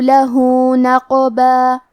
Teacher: کلمت نقبہ میں قاف ہے اور اس پہ جزم ہے. قاف بھی حروف القلقلہ میں سے ہے، تو ہم یہ حرف کو ہلاتے ہوئے یہ کلمہ کو پڑھیں گے